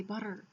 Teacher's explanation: We say butter, and we roll the T off of the top of the roof of our mouth